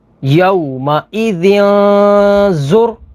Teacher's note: تنوین کے بعد زا ہے، زا حروف اخفا میں سے ہے تو یہاں پر اخفا ہوگا یعنی غنہ کر کے پڑھیں گے